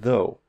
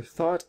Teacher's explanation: One is voiced, so in though, you're vibrating your vocal cords, and in thought, you're not.